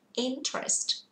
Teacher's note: chịu khó để ý trọng âm nó rơi vào thứ nhất chứ không phải thứ ba